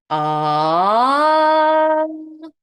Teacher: now you're going to Glide it in a pitch Glide so you're going to start low and you're going to Glide it up